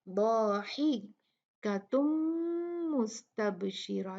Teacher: یہاں پر بھی تنوین کے بعد میم ہے تو یہاں ادغام کریں گے اور دو کاؤنٹ غنہ کے ساتھ